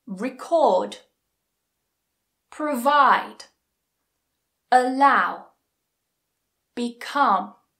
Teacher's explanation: They are all two syllable verbs. And where does the stress go? On the second syllable.